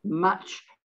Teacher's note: Match, now you might be a little bit of an emphasis on the T here, match, because you are putting the T slightly before the CH sound, match. It isn't just match, match.